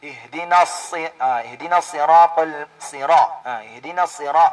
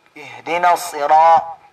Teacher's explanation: Ihdinas ang ra maftuha, yung ra na ang kanyang vowel ay fatha, ay makapal siyang bigkasin.